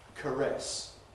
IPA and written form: kəˈres (caress)